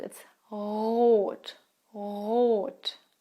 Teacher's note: In standard German, the R is not rolled.